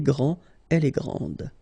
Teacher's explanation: Okay, so we've got a little bit the same situation here as we had previously with français and française, because we don't pronounce the final S in français, and it's exactly the same thing. This final D is not pronounced. Okay, so grand, and then the feminine form, grande.